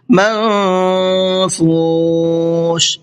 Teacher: نون کی آواز کو تھوڑا سا ناک میں چھپا کر کے پڑھیں گے